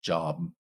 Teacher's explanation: at the end of a word like job, you may not release the B. So it may just be like job with no release of air afterwards.